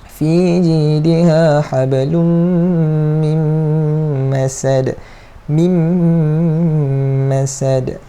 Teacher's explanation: Nun ni macam kita dah buang lah. Kita terus masuk terus ya ke dalam mim. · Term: idgham ma'al gunnah